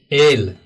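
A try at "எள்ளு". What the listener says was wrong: एಳ್ಳು, ल नहीं ळ, एಳ್ಳು, लहसुन,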